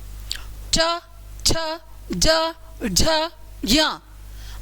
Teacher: अच्छा, जब इनको बोलेंगे हवा का प्रेशर तालू पर होगा, च छ ज झ य, आपकी जीभ ऊपर की ओर उठकर रगड़ खा रही है, च छ ज झ य, खा रही है ना रगड़, तालू को रगड़ खा रही है, ठीक है।